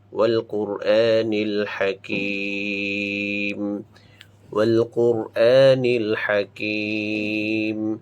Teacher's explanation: তারপরে আ খারা জবর, হামজার উপরে খারা জবর বা আলিফের উপরে খারা জবর রয়েছে, এটা আমরা এক আলিফ টেনে উচ্চারণ করব